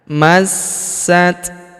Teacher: huruf sa berharakat tasydid. Kita tahan dan kita tekan masat. Huruf ta berharakat sukun. · Huruf ta berharokat sukun, kita berikan hembusan tipis.